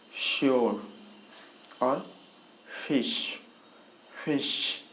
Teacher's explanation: इसके बाद फिर से एक और सा जो हमने अभी थोड़ा सा पहले देखा, तो ये वाला जो सा है ये है मूर्धन्य सा, क्योंकि इसमें हमारा टंग जो है जॉ के नीचे वाले हिस्से को, जबड़े के नीचे वाले हिस्से को टच करेगा